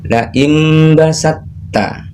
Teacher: Jadi huruf tak sukunnya dileburkan. Cara membacanya antara sin dengan tak.